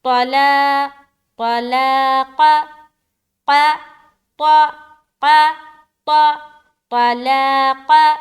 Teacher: وَإِنْ عَزَمُوا الطَّلَاقَ، تو کو موٹا، طلاق، طلاق، تو بھی موٹا اور قا بھی موٹا، لیکن بیچ کے جو حروف ہے لام الف مدہ جو کرنا ہے وہ باریک رہے گی۔